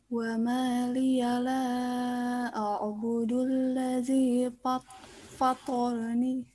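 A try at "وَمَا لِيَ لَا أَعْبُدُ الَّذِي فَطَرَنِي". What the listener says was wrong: Iya, betul.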